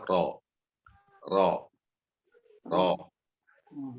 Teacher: semua ro kalau berharokat fathah ya selalu dibaca tafkim.